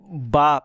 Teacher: با دونوں ہونٹ مل کر کے آواز رک رہی ہے